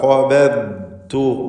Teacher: ദ്വാദിന് തഫ്ഖീമുണ്ട്, ഇസ്തിഅലാഇൻ്റെ ഹർഫാണ്. ഇസ്തിത്വാല എന്നത് അതിൻ്റെ പ്രത്യേക സിഫത്താണ്.